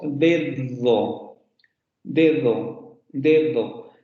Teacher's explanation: el segundo fonema es un dental fricativo sonoro. Eso quiere decir que va a cambiar el modo de articulación.